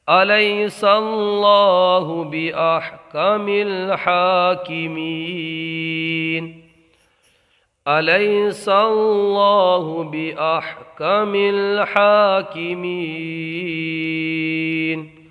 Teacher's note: یہاں پر یا لین ہوگا، اللہ کے نام کو پر پڑھیں گے، ہا کو ایک الف کھینچ کر کے پڑھیں گے، یہاں نون کو ساکن کر دیں گے، مد عارض کا قاعدہ ہو جائے گا۔